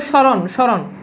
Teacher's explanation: মফালা শব্দের শুরুতে হলে তার কোন উচ্চারণ হয় না খুবই গুরুত্বপূর্ণ কথা তবে সামান্য নাসিক্য হয় মানে নাসিক্য বলতে চন্দ্রবিন্দু চলে আসে ঠিক আছে মানে নাসিক্য উচ্চারণ